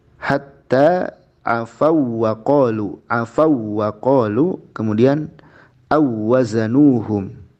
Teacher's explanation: Hanya dalam idghamnya tidak boleh ada gunnah, tidak boleh ada dengung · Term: wawu lin